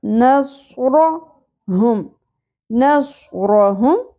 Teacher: نص صاد پر ہوگا, را بھی پر ہوگا